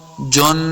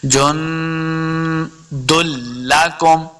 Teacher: نون ساکن کے بعد دال حروف اخفاء سے ہے اس لیے یہاں پہ اخفاء کرنا ہے، یعنی غنہ کر کے پڑھیں گے